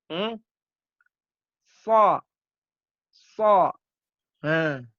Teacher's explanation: Huruf sa, ujung lidah bertemu ujung gigi seri bagian bawah.